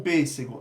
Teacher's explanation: o pêssego, a gente usou o acento circunflexo porque é timbre fechado, pêssego, não é pêssego.